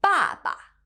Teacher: Baba has the fourth falling tone · the number 八 has the first flat tone, whereas 爸爸 has the fourth falling tone.